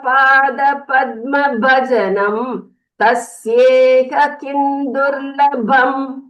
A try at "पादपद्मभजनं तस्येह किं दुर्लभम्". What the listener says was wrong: Uttamam Bhagini, just one small observation. The Mahapranas were not very clearly heard, so while practicing, you can stress on them more. That will be good.